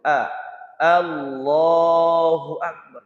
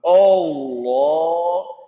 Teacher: Jadi hamzahnya itu dibaca A, jangan dibaca O. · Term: Hamzah fathah itu pakai A